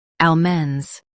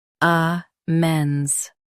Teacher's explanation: In US, stress al. In UK, stress ah.